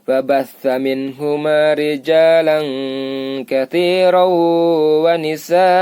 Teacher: An dibaca a panjang 2 harokat.